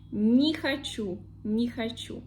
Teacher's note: these two words, make one phonetic word, and we have stress already on the second word, not the first one.